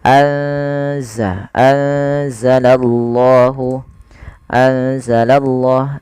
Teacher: salah satu huruf Ikfa yaitu huruf Zai maka cara membacanya yaitu memasukkan nunnya atau menyamarkan nunnya kepada huruf Zai